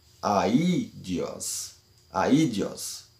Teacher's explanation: estas vogais devem ser lidas separada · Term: trema